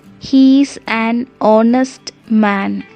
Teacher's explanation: it sounds like a vowel because the letter h is silent we have to say he is an honest man not harnessed